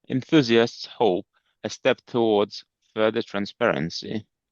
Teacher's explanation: I think the W in towards might be very fractionally too strong. You could ease that back a bit, but you're doing okay.